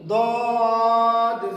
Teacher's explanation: দদ জিহ্বার গোড়া হইতে মোটা আওয়াজে